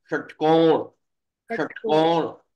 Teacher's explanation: जिस सा को बोलते समय हमारी टंग जो है वो ऊपर तालु को छुए, वो कहलाता है तालव्य सकार, है ना। और जिस सा को बोलते समय हमारी टंग जो है वो किसको, अंदर जो अंदर की तरफ मूर्धा होता है ना, मूर्धा, उसको छुए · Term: मूर्धन्य सकार